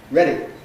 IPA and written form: ˈreɾi (ready)